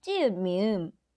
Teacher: the pronunciation of 지읒 in Kyeongsang-do is quite similar to 쌍지읒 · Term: Kyeongsang-do accent